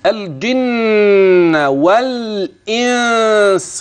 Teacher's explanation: اللام في كلمه الجن واضحه وكلمه الانس ايضا واضحه تمام الكلام يعني مظهره هنا وهنا وغنه النون في الجن تسمى